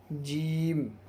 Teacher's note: جیم کا مخرج بیچ زبان تالو سے مل کر جیم ادا ہوتا ہے۔